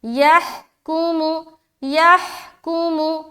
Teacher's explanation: ہا کو بالکل سینے کی طرف سے نکالنا ہے، یحکم، یحکم، यहकुमु, हा जो है ना, हा का मखरज भी हलक है, लेकिन एकदम सीने की तरफ वाला जो हिस्सा है वो।